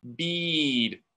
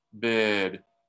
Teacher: What we're trying to do here is raise our metacognitive awareness of this squeezing, making it more tense, and then relaxing for it being lax